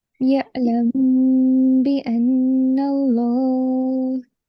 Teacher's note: So you can see that there is a meme sakin and it is followed by the letter ba, right? So you have to make a 2-second nasal sound there. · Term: ikhfa of meme sakin